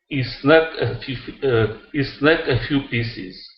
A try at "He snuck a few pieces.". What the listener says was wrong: Pronounce this H. He instead of E. He. He snuck a few pieces.